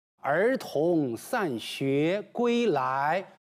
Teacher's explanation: 儿童散学归来，全部是平平平，单调，没有抑扬顿挫，没有高低起伏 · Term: 阳平